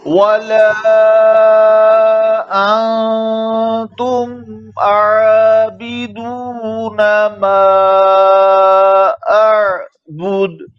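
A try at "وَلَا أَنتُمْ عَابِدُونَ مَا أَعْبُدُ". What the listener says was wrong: अंतुम आबिदून, मीम में आवाज को जरा जारी रखें। तुम मा, इसमें हल्का सा कलकला हो रहा है, इसको खत्म करें, हिलाए नहीं सुकून को। तुम आबिदून, तुम आबिदून।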